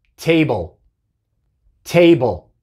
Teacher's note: En table tenemos la B seguida directamente por el sonido de la L, table, y la E es muda